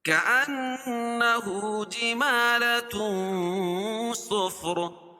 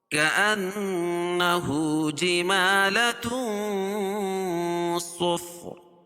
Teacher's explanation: ہے اور اس سے پہلے زبر ہے كأنه جمالة صفر كأنه نون مشدد ہے، ٹھیک ہے، اس میں غنہ ہوگا